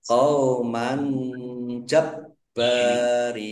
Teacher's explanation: Fathah tanwin bertemu dengan huruf jim, bacaan ikhfa, dibaca samar-samar. Baknya dibaca double, ada tasdidnya, ditekan biar tampak doublenya. Bak fathah alif, mat tabi'i, panjang 2 harokat.